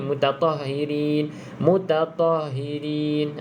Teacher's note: Jangan sampai hilang ha angin